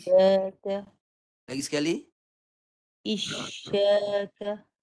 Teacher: Isyaka. Cuba fokus masa menyebut shin mati tu, tengah lidah sedang naik tu. Tu sebab dia boleh jadi bunyi, boleh dengar bunyi shin tu.